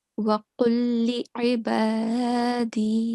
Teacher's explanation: we are merging this lam sakin into the lam mushaddad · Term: idgham